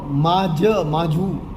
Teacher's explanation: ગ નો જ કંઠે નો તાલવ્ય